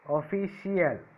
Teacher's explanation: Here CL is the first syllable from the end and phi is the second syllable from the end. So where did I keep the stress mark? At the second syllable from the end.